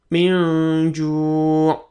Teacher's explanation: Bukan min ju, tapi min ju' ya, seperti eng dan ditahan dua ketukan